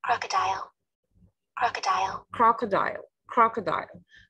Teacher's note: the stress is on the first syllable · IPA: /ˈkrɑː.kə.daɪl/